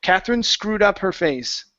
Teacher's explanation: if you connect the two words together that e disappears you don't need to say it · connecting the S to the word Catherine